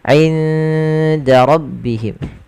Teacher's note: Ikhfa'nya samarkan nunnya ke huruf dal. Awalnya inda, tapi dia ketika ketemu dal inda langsung ke huruf dalnya.